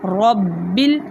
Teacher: را کے اوپر زبر ہے، اس لیے ہم اس را کو موٹا پڑھیں گے. با مشدد ہونے کی وجہ سے مضبوطی اور جماؤ کے ساتھ پڑھا جائے گا